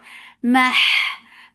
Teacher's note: Mah for fatha open jaws attached with ha. Ha will get sifa of rakhawa and it should be from the middle part of your throat. Mah, ya, 2 counts long.